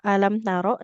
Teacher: rnya enggak boleh panjang. Fathah tidak bertemu alif.